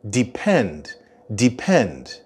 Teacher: The stress in the word depend is on the end.